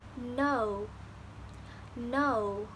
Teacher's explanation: in this vowel there is combination between uh and o